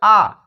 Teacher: आ यानी कि इसको हम कहां से बोल रहे हैं जीभ के पीछे से